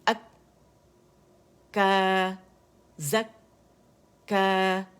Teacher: کاف کا پہلا جو سکون ہے اس میں آواز بند ہوتی